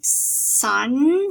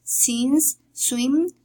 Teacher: we have the voiceless alveolar fricative